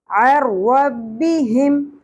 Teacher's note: ہا اقصی حلق سے ادا ہوگا گہرائی کے ساتھ